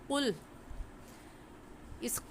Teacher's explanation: قاف کا مخرج ہے حلق کا آخر جو کوے کے پاس ہے، تالو میں لگانے سے قاف نکلتا ہے، تو ہم اس قاف کی جگہ کاف نہیں پڑھیں گے، کیونکہ اگر ہم نے قاف کی جگہ کاف پڑھا تو مطلب کیا ہو جائے گا؟